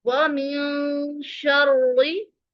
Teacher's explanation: व मिन शर्रि, रॉ मुशद्दद है, एक जज़म वाली रॉ है और दूसरी मुतहर्रिक रा है जिसके नीचे जेर है। इस रॉ को हम बारीक पढ़ेंगे।